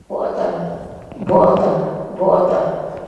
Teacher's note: we hear that the first o is in fact glottalized it's not short not long